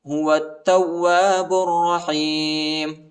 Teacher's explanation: واو کو تا کے ساتھ ملائیں گے، الف اور لام نہیں پڑھا جاتا، تا کو واو کے ساتھ ملانا ہے، واو کے بعد الف آیا ہے، اس کو تقریباً 1 الف کی مقدار تک کھینچنا ہے